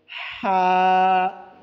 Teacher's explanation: हलक के दरमियानी हिस्से से हा अदा होते हैं। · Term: हा का मखरज